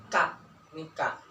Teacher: pakai lidah yakni sebelah bawah sedikit dari tempat keluar huruf qaf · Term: huruf kaf